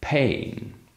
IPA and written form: pein (pain)